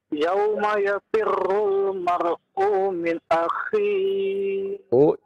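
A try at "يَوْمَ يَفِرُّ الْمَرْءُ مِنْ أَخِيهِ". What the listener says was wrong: U-nya jangan dipanjangkan. Yauma yafirrul mar'u min akhi.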